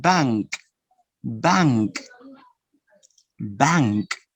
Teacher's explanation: the N, it's here, velar, is not alveolar. Bank. So your tongue goes back, not to the front, because N is alveolar.